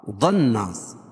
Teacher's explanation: ضن ضاد کو پور پڑھیں گے, نون مشدد, اس میں غنہ ہوگا